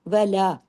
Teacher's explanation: لا دو حرکات کھینچنا ہے، واؤ کو صرف ایک حرکت